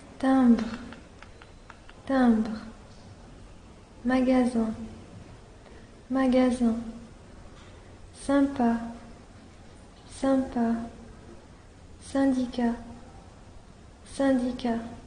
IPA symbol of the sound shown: ɛ̃